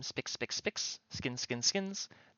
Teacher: the double S just turns into a 1S